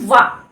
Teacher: वा का उच्चारण स्थान क्या होता है, दंत और ओष्ठ दोनों ही होता है